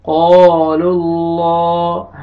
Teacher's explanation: اللہ تعالیٰ کے نام سے پہلے پیش آ رہے، آپ نے لام کو موٹا کر کے پڑھنا ہے.